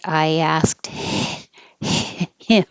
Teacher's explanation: you don't have to say the h i asked him just get rid of the air flow